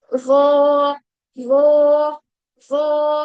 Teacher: तो वो के लिए हमें क्या करना है? सिर्फ जबान बाहर ही रहेगी, लेकिन जो पीछे वाला यानी अक्सर लिसान है उसको हमें तालू की तरफ उठाना है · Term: हैवी